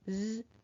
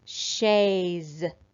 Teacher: this apostrophe s is going to make a voiced sound because it's coming after a vowel sound